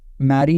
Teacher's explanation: active articulator is the tip of the tongue active articulator क्या रहता है तो भाई टिप ऑफ द टंग रहता है and passive articulator is teeth ridge